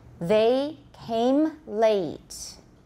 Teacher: make the a longer don't make the m too soon don't don't say the m too soon use the echo they · watch that th voiced interdental